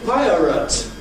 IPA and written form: ˈpaɪərət (Pirate)